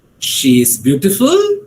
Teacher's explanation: but I said, she is beautiful, I used a rising tone.